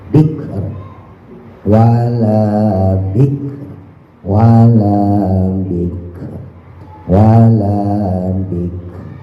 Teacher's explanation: Kalau enggak bisa fiker enggak apa-apa ditebelin. Tapi kalau bisa kafnya jangan sampai mantul. Jangan dike, jangan ada e-nya.